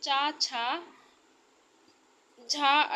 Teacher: तालव्य, जो तालू से बोले जाते, तालू से छूते हुए निकलते हैं